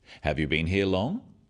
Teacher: questions that start with have you are yes no questions so they have a rising tone